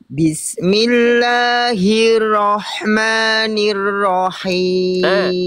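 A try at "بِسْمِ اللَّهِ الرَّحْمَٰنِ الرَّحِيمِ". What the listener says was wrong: Ro bertasdid yang awal itu belum ditekan, ya. Ditekan lagi ro bertasdid yang awal.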